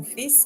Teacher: we pronounce the S but not the L for fils